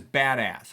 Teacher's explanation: But spondee, the words are both stressed.